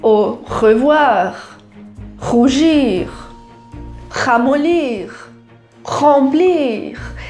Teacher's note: o R, quando está no começo, ele vai ter uma tendência de ser mais forte e lá no final, mais fraquinho